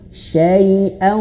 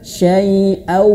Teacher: Nah, manyunkan dan masukkan ke dalam hidung, harus ngirung. Syai'an harus masuk hidung, bukan hanya sekedar syai'au. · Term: Idgham bi gunnah